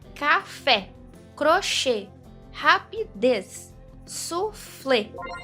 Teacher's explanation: Viu só como a última sílaba é a mais forte? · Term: oxítonas